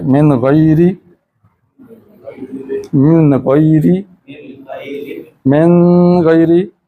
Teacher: اس وقت آواز ناک سے لمبی نہیں ہوگی